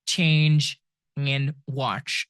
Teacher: These are two sounds combined together. T and sh and you get ch